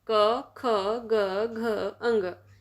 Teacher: क वर्ग कंठ से बोला जाता है